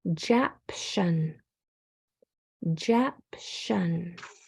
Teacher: That O is turning to the schwa sound. Tion says shun.